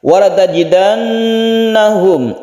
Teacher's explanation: kita dengungkan karena nunnya bertasydid, dan tasydidnya ini asli maka disebut dengan gunnah musyaddada.